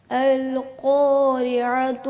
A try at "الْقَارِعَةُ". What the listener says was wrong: القا نہیں پڑھنا، القارعۃ، القا اس کو موٹا نہیں کرنا زیادہ، القارعۃ،